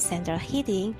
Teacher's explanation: The words central and hitting each sound rather similar when pronounced alone, but when spoken together as the phrase central hitting, the rhythm alters, so that the strongest stress goes onto hitting